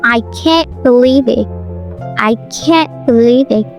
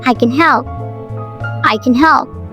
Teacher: In can't, the vowel is longer and more nasalized due to the following and.